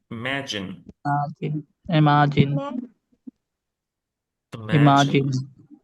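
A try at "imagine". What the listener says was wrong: ও ভাই আমি মা বলছি না গো আমি ম্যা বলছি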